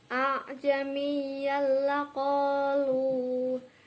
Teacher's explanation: Lah, di sini terdapat fathah tanwin bertemu dengan huruf lam yaitu idgham bilahuna dibaca lebur tetapi tidak mendengung